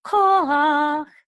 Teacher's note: notice the accent is on the first syllable, ko, not rach. Okay, so it's korach, not korach.